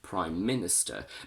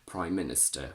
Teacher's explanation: If we follow the rule, we should geminate m, so we say prime minister, but in normal common spoken English we actually say prime minister, where we don't double up the m and only one is pronounced